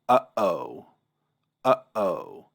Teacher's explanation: the glottis opens and closes to allow and prevent air from coming through. So, what the ayin and the aleph represent is a either a burst or a closing of the glottis. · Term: glottal stop